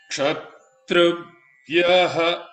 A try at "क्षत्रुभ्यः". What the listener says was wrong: भ्यः you are saying भ्यः that is udattam bhya is down